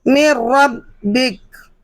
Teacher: آپ نے دیکھا کہ جو نون ساکن ہے اور اس کے اوپر تیر لگا ہوا ہے، تیر کا نشان، تو آپ دیکھ سکتے ہیں کہ یہاں پر ہم نے بالکل بھی نون ساکن میں غنہ نہیں کیا، اور ہم نے غنہ کے بغیر اس کلمے میں رو کو ملا کر پڑھا، تو اس قاعدے کا نام ادغام بلا غنہ ہے۔